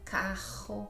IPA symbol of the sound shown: ʁ